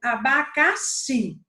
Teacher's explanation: Onde foi que eu deixei a voz mais forte, a entonação mais forte? No xi. Essa é a sílaba tônica.